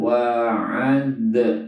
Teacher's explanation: ad itu qalqalah sugro ya, dipantulkan. Wa ad, nah, harus betul pengucapannya.